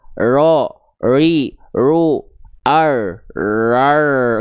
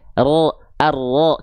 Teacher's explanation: Getarannya cukup digetarkan sedikit saja. Tapi ingat, tetap jelas, tetap tegas, jelas kedengaran.